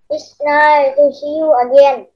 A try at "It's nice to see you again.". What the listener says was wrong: Chữ nice nhớ có S nha. It's nice to see you again.